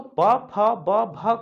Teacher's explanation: तो प, फ, ब, भ को जब हम बोलते हैं तो दोनों ओठ आपस में स्पर्श करते हैं और प्राणवायु ओठों को स्पर्श करते हुए बाहर निकल जाती है